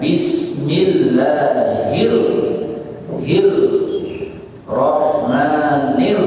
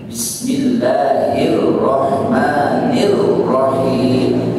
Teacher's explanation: Tekanannya pada hir dan nir.